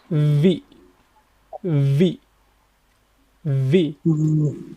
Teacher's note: for the V sound, our lower lip will touch our upper teeth